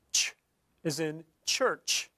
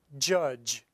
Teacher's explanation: is a combination of sorts between alveolar and palatal and this is an affricate sound an example of a voiceless affricate is ch is in church